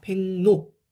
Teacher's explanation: 기역은 이응으로, 리을은 니은으로 둘 다 비음화가 일어나는 이런 거는 우리가 상호동화라고 합니다. 서로 영향을 줬다라는 거죠.